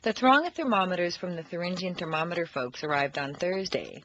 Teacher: for the unvoiced th is similar to that of s but for th the tongue is extended through the teeth instead of hissing behind the back of the teeth